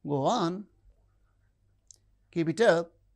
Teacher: And the other one is the rising tone. The lower rise in statements is encouraging.